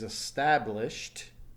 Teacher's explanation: the ending sound being Shh noticed that there's no vibration so the past tense is established no vibration takes a T sound